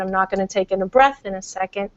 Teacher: going to hear what's called a glotto fry can you hear the little scratchiness in my voice that's because I didn't take a breath in soon enough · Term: glottal fry